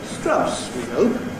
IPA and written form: s.t.r.aʊ.s w.i h.əʊ.p (Strauss, we hope)